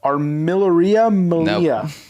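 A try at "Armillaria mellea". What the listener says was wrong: Nope. You got the Malia, right? It's Armillaria. Armillaria. No, there's no R at the beginning. Armillaria.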